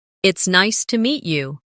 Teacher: stress nice and meet to make it sound warmer.